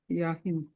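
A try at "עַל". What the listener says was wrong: Al. Ayin is silent. with the A. Al.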